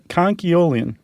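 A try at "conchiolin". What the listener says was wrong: Yeah, you're throwing that L in there. It's very easy to want to do. Yeah, conchyolin.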